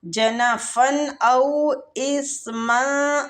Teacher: آخر میم کی جو تنوین ہے اس کو ہم اخفا دیں گے